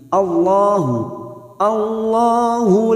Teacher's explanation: Walau sya Allahu, hamzah harus tegas. Allahu lam jalalah yang sebelumnya fathah kita baca tafkhim.